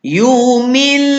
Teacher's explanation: Jadi bunyi dia masuk terus. Bunyi nun tak ada langsung.